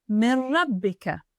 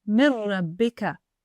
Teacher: For example, Min Rabbika. You jump from the Mi to the shadda on the Ra.